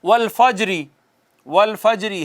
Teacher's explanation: زیر والے حرف پر، زیر تو اڑ جائے گی، ساکن ہو جائے گا نا وہ حرف، اس کے باوجود وہ کہتے ہیں یوں لگے گا کہ حرکت کا ایک تہائی حصہ پڑا گیا ہے، ایک تہائی حصہ پڑا گیا ہے۔ زیر والے حرف پر یوں وقف کرنا کہ لگے کہ حرکت کا ایک تہائی حصہ پڑا گیا ہے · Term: روم